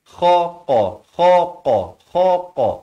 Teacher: Kha ni di hujung kerongkong, qaf ini di pangkal lidah.